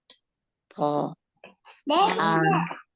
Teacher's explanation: Bagian ujung lidah ketemu 2 gigi seri bagian atas. To. Agak angkat.